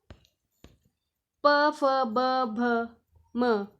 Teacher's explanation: प फ ब भ म ये ओष ध्वनियां है